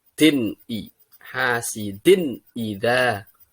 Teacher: Ini harus jelas, enggak boleh bingung antara din sama i karena izhar.